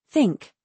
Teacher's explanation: For the unvoiced TH, think, a gentle, steady stream of air.